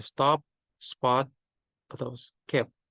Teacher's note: voiceless stops pe, te, ke itu menjadi unaspirated ketika berada setelah konsonan S. Jadi di kata seperti stop, spot, atau skip itu tidak stop, tidak spot, tidak skip, tapi stop. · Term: unaspiration rule